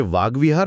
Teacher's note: ते क च्या ऐवजी त्याच्याच रांगेतील ग हा ध्वनी निवडतात